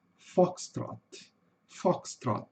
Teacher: Cuidado com esse i no final. Esse i no final não existe, tá pessoal?